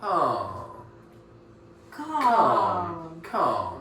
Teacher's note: That L doesn't exist. It doesn't exist. It's just written down.